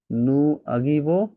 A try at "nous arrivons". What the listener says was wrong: হ্যাঁ, নুর সাথে শেষে এস আছে, প্লাস এখানে ভাওয়াল আছে, কনসোনেন্ট ভাওয়াল, এই জন্য এখানে লিয়াজও করতে হবে।